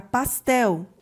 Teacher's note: o tel é a sílaba mais forte, que está na última posição. Ela também é uma oxítona.